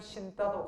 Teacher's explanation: 역시 된소리예요. 어간에 니은이나 미음이 올 때 뒤에 게 된소리로 바뀌는 건 된소리 되게요. 신을 신따도 같은 겁니다.